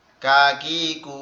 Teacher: কাপের উচ্চারণ হচ্ছে জিহ্বার আগা থেকে একটু আগে বাড়ায়া তার উপরে তালুর সঙ্গে লাগায়া